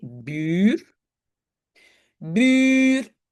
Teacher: Mais moi j'entends un long u.